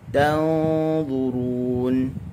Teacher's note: Nun mati bertemu dengan dha. Wa tanzurun dengung tinggi.